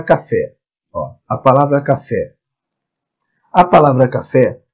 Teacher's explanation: ela possui a última sílaba tônica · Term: oxi